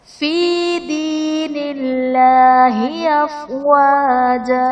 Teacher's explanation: دین اللہ میں اللہ عز و جل کا لام باریک پڑھا جائے گا کیونکہ اس سے پہلے حرف پر زیر ہے. اور وقف کی صورت میں افواجا، دو زبر کی تنوین وقف کی صورت میں الف سے بدل دی جاتی ہے.